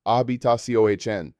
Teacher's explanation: The stress falls on the final syllable, indicated by the accent mark.